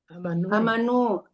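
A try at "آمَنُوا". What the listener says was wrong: Ya dipanjangkan sedikit. Amanah. Ya dipanjangkan ya. Ya kalau dipendekkan aman artinya. Kalau dipanjangkan beriman.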